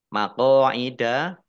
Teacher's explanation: qaf fathah alif mat tobi'i juga dibaca panjang dua harokat